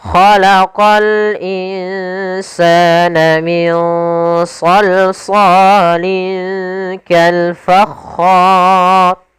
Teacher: hukum rnya ro yang dibaca dengan tebal maka dinamakan ra tafkhim